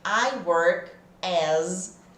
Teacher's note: esse as esse S tem som de z Cuidado com esse som